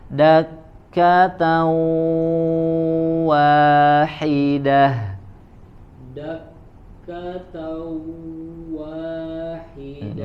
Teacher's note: Di sini huruf wawunya dimasukkan ya, dileburkan suara huruf tanwinnya ke huruf waw. Dakkatan wa, dan ditahan ya, ditahan ada ziyadatul gunnah.